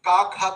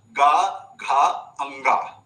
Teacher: जैसे ही आपने क ख तो बोल बोला तो कंपन इतना महसूस नहीं हुआ।